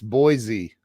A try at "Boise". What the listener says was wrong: You know that you're a out of towner if you Boise with the Z. It's which it's not proper English, but yeah, Boise is French, and in French, les bois means the trees because there's trees just everywhere around here, and so it's a beautiful little place.